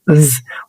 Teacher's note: ولو انت ملاحظ هنا ان في الاحبال الصوتيه في زنه عكس اللي فوق ما كانش فيه زنه، يبقى هنا نفس الفكره بالظبط. بتخلي الاسنان في النص ما بينها اللسان وبتطلع بوش هواء بس بيكون فيه زنه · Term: voiced